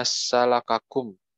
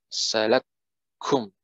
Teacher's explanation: Namun karena ada baca idgham kabir, jadi salakum. Nah, jadi K-nya itu yang pertama tidak dibaca. Itu karena dua-duanya berharokat dan juga dua-duanya ada hurufnya yang sama. Jadi seharusnya salakakum, namun dibaca jadi salakum langsung masuk ya, ke tasjidnya.